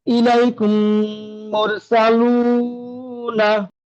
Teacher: মিম সাকিনের পরে মিম এসছে, মিম সাকিনকে মিমের সাথে মিলিয়ে একালিক পরিমাণ গুণনা করে পড়তে হবে, একে ইদগমে সাফাবি বলে।